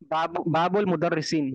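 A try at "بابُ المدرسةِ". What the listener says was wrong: बाबुल। मुदर्रिस नहीं है। हाँ, बाबुल मदरसाते। मदरसा है ना जो, बाबुल मदरसाते।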